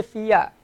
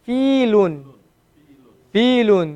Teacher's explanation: So the ya is just being used to elongate the fa.